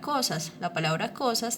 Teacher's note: la palabra cosas tiene el acento en la co